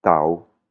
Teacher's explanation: Un son bas, par exemple, le mot Tao, Tao, c'est la tortue, Tao, hein, il tombe, le son il tombe